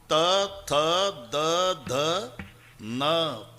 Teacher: किती ताकद लावून धक्का मारते जीभ आतून दाताला